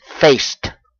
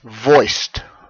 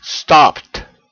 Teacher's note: If the final sound is an unvoiced consonant like face or voice or stop or replace, then you're going to pronounce the ed as simply a hard t sound. No vowel at all. Simply t.